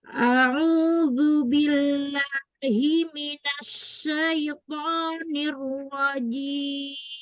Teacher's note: Minasnya tafasyi, bukan as-safir, bukan binas, tapi minasya.